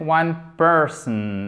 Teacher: One person, accent tonique sur la première syllabe.